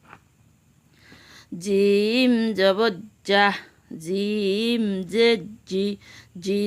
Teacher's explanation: জিম জিহ্বার মাঝখান থেকে শক্তভাবে আদায় হবে